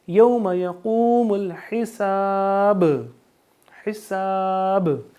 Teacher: با پہ جزم ہے تو یہاں پہ قلقلہ لگے گا، با کی آواز دوبارہ ہمیں سنائی دے گی